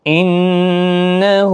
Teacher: نون مشدد پر غنہ ہوگا ، ہا کے اوپر الٹا پیش ہے، 1 الف کی مقدار